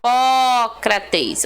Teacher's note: certinho né três porque o pó recebe o acento tá vendo a sílaba tônica ela é a antepenúltima sílaba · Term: proparoxítona